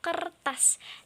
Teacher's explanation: bunyi sertaan yang dihasilkan dengan cara ujung lidah ditarik ke belakang segera atau ketika bunyi utama itu diucapkan sehingga terdengar bunyi sertaan R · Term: retrofleksi